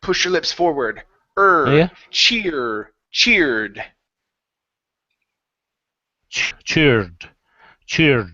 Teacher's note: if you focus on pushing your lips forward you won't get the r sound you'll get the ER sound